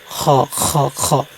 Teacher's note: কিন্তু এটা হচ্ছে হলকের শেষ অংশ, মানে হলকের শেষ উচ্চারণ করবেন। হলকের শেষ অংশ থেকে খ উচ্চারণ করবেন